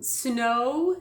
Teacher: we go o kind of ending with a w or an u shape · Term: diphthong